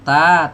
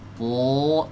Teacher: Ta tipis dengan to yang tebal, itu bedanya.